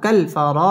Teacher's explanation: র পুর হবে র মদ তাবাই একালিফ টেনে পড়তে হবে